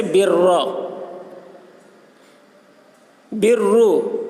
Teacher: برا کے را کو پر پڑھیں گے اور برو کی را کو بھی پر پڑھیں گے